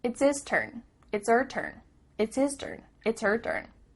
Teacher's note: the H at the beginning of his and her is cut off we don't do this all the time but it does happen